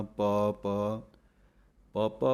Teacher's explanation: ਕਈ ਬਿੰਦੀ ਲਵਾਉਂਦੇ ਹਨ, ਪਾਪਾਂ ਕਹੋ, ਲੇਕਿਨ ਬਿੰਦੀ ਨਹੀਂ ਹੈ ਅਤੇ ਨਹੀਂ ਬੋਲਣੀ। ਪਾਪਾ ਪਾਠ ਪੜ੍ਹਨਾ ਹੈ, ਜ਼ਿਆਦਾ ਪੋਲਾ ਵੀ ਨਹੀਂ ਪੜ੍ਹ ਜਾਣਾ।